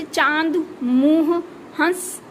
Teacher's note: ऐसे शब्द जिनका उच्चारण करने से नाक और मुंह से उच्चारण होता है